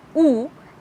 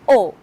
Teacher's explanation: closed lip rounding as in U and open lip rounding as in O